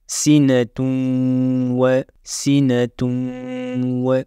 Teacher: Donc, on ne prononce plus le N, mais on le fait fusionner. On va changer le N, le Noun, et on va le transformer en Waw. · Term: idgham